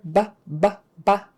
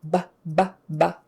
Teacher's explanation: of course is made with the two lips touching together BBB it's a very forceful sound it's like a stop sound